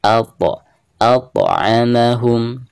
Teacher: huruf po ketika sukun maka dihukumi qalqalah, dan cara membacanya yaitu harus ada pantulannya